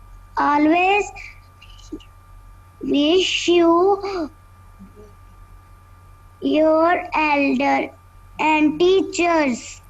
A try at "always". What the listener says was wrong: Always नहीं बोलते, always बोलते हैं. ओके आ की साउंड नहीं होती, ओ की होती है. Always wish your elders and teachers.